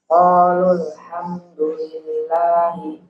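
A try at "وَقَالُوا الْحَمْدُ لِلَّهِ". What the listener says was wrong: Ada yang ketinggalan hurufnya? Wa.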